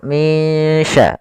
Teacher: Nunnya kita samarkan kepada huruf shin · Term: ikhfa